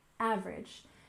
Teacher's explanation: we stress the first syllable in average